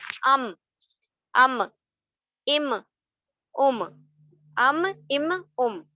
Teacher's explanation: दोनों dry parts जो आपके होंठ हैं, वो मिल जाते हैं और वो बन जाता है आपका मीम · ऊपर और नीचे दोनों ड्राई पार्ट्स को जब आप मिला देते हैं, तो मीम अदा हो जाता है